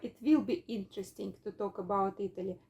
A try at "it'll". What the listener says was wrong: Alright, so you're saying it will. Apparently it will actually has a combination for it. It'll. Say it'll. It's like almost little, like that ending. It'll be interesting to learn about Italy. No, you're going it will. It'll be interesting.